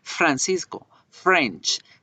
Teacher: yo debo hacer diferencia también con la f no vibra la f debe sonar como el la frenada francisco realmente la